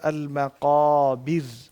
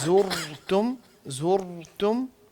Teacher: ایک را جو ہے باریک پڑھی جائے گی اور دوسری موٹی پڑھی جائے گی